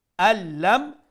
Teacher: from the an lam it will become al-lam because the noon will incorporate it in the lam because lam and ra is the idgham letter, and that's why